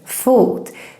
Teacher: the O in fot is longer, fot, because we're just one consonant coming after.